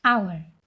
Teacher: Hour starts with H. Even though hour starts with H, we use an over here because H becomes silent. We pronounce it as hour.